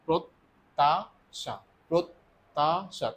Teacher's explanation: ত টা মূলত দুইবার উচ্চারিত হচ্ছে